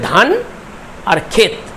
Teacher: ক্ষেত সেখানে ত বলে শেষ হচ্ছে অর্থাৎ সেখানে আর কোন স্বরধ্বনি আসছে না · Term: রুদ্ধদল